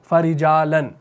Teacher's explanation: را کے نیچے زیر آ گئی، کسرہ آ گئی، تو اس را کو ہم نے باریک پڑھا